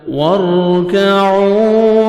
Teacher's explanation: را ساکن سے پہلے زبر ہے، را کو آپ نے پر کرنا ہے